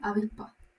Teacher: aspiración o pérdida de la S al final de la sílaba